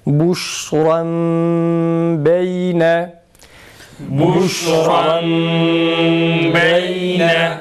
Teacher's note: Buşran kelimesindeki nunu mime çeviriyoruz ve mimi ba'da gunne yapıyoruz.